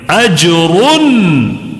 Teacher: نون کو ظاہر کر کے پڑھنا ہے، جلدی پڑھنا ہے، غننے کے بغیر پڑھنا ہے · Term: اظہار